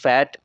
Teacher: इनकी place of articulation जो है that is upper teeth with lower lip, क्योंकि इनकी प्रोनाउंसिएशन में अपर टीथ और लोअर लिप नीचे वाला जो लिप है वो इन्वॉल्व होते हैं। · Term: लैबियोडेंटल्स